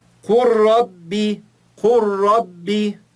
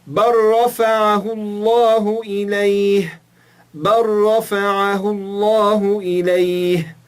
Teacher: Reparem que o lam, ele não é pronunciado.